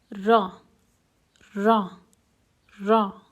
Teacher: letter this raw is quite different than the American R because the raw is pronounced with the front tongue touching the oral cavity while some vibration is happening in the vocal cords